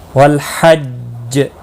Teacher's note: نہیں، حج جیم ساکن پڑھا جائے گا وقف کی صورت میں، اس پر قلقلہ بھی ہوگا، مشدد ہے اس لیے تھوڑا قلقلہ خوب ہوگا